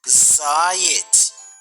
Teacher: правильно наголос падає на перший склад